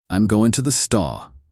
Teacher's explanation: someone from New York might say, I'm going to the store, dropping the R and speeding up their speech.